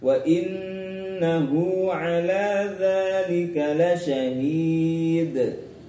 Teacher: Kemudian di ayat ke-7, wa innahu ala dzalika lasyahid. Ada nun tasdid lagi, contoh dari gunnah musyaddadah, harus dengung ya.